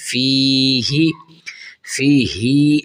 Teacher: فی ہی، فی ہی، ہا کو نہیں کھینچنا، یاد رکھیں، اکثر بچے پڑھتے ہیں فی ہی، ہا کو کھینچنا نہیں ہے، بس ہلکا سا، بس زیر جتنا کھینچنا ہے، فی ہی۔ قوف الف زبر قو، لام زبر لا، قال۔